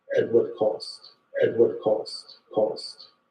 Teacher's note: Another feature that we see in DC, similar to New York, is the raised thought cloth vowel